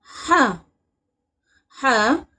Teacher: ہا حلق کے درمیانی حصے سے ادا ہوتا ہے